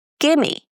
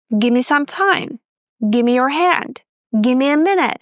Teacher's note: When speaking fast, you might say, "Give me." So, you drop the vv sound.